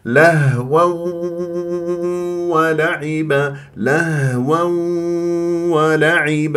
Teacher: التنوين مع الواو ادغام بغنه اذا لازم تجيبلي غنه من الخيشوم